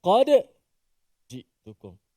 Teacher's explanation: membaca perkataan qad ji'tukum dengan menzahirkan, mematikan dal itu. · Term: izhar